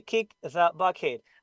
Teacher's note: No need to block the air. The. Push the air. Bite it slightly. Air is there. Friction is there. And the vocal cords vibrate. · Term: TH, voice